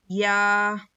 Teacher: जुबान के बीच के हिस्से को ऊपर के टालू में लगाने से या अदा होता है